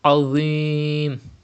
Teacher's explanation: You have to read with thicker voice, but because dha is pronounced without whistle, so you have to pronounce it without whistle. And there is a temporary sukoon after ya madda at the end of this word. Madde ariz will be done. You have to stretch up to 5 harakat. · dha is also a mustaliya letter. You have to read with thicker voice, but because dha is pronounced without whistle, so you have to pronounce it without whistle.